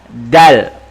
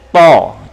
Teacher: Ujung lidah berada di atas gigi depan. Dal, to. Cuma dal tipis, to tebal.